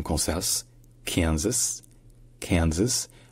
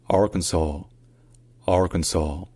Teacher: le S à la fin, il est prononcé dans Kansas, Kansas, Kansas, alors qu'il n'est pas prononcé dans Arkansas